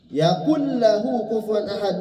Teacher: Nunnya hilang masuk huruf lam. Itu yang disebut idgham kamil atau idgham tam.